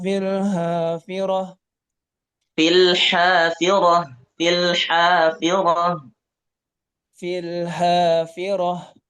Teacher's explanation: huruf ha itu keluar dari tenggerokan tengah